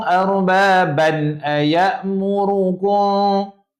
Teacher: tanwin selari tu tak dengung dia baca jelas